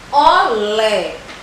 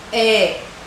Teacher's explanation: Olé termina com o som E, que é o som aberto